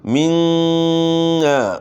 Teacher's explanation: منا نون مشدد ہے، اس میں آپ نے غنہ کرنا ہے